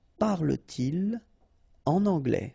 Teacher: Parle-t-il en anglais, okay, so no liaison after your pronoun